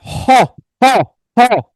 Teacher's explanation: অল্প প্রাণে হচ্ছে আমার জোর কম দিতে হয়, মহাপ্রাণে জোর বেশি দিতে হয়। মনে রাখবেন হ কণ্ঠনালীয় ব্যঞ্জন, হ মহাপ্রাণ